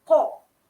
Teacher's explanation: Huruf Qa adalah huruf isti'la. Maka di sini perlu tebalkan dia.